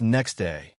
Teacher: Instead of next slash day, it becomes next day. The T sound disappears. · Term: consonant plus consonant blending